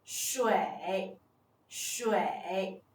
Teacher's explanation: Its initial is 'sh' The final is 'ui' The tone is the third tone